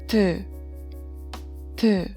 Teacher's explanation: it has a sound of D or T, somewhere between D and T sound